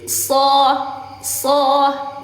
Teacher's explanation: Makhrajnya bukan di bibir. Makhrajnya ada di ujung lidah bertemu gigi depan atas